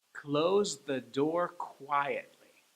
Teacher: Let's do it: 'Close the door quietly.' So, 'close the door quietly...' notice how 'the' didn't get any stress